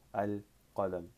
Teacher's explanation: For example, when you add alif lam, you're gonna connect it directly as shams, and otherwise qamari nouns, you'll say the entire al and the sound separately